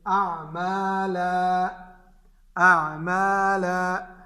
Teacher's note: اس پر جب ہم وقف کریں گے تو وہ الف مدہ میں بدل جائے گا۔ جیسے اعمالا، اب یہ دو زبر ہے اس پر، اعمالا، اس پر ہم وقف کریں گے تو پڑھیں گے اعمالا، اعمالا، تو یہ جو ہے اس میں بدل جائے گا الف مدہ میں۔